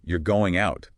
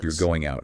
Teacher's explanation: falling pitch statement, same words, totally different message purely based on the melody.